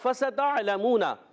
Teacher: سین باریک رہے، موٹا نہ ہو. فَسَتَعْلَمُونَ، بعض بچے پڑھتے ہیں فَسَتَعْلَمُونَ، تعلمون پڑھیں گے تو عین حمزہ میں تبدیل ہو جائے گا.